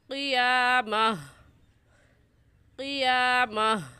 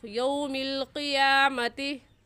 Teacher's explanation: گول تا پر وقف کرتے وقت وہ ہا بن جاتی ہے، تو ہم وقف کی صورت میں کہیں گے قیامہ قیامہ، اور جب ملا کر پڑھیں گے تو یوم القیامتی۔